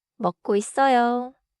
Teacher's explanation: The key is not to pause too much between 고 and 있어요. · In natural speech, 있어요 is often smooth: 이써요 in pronunciation, but the spelling stays 있어요.